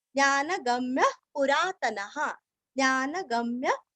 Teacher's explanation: ग के ऊपर आघात म्य और हल्का सा सांस बाहर छोड़ना है